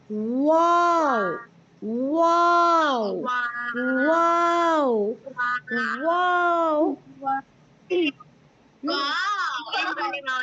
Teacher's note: जब आप वाव को पढ़ेंगी, पहले आपके होठ गोल हो जाएंगे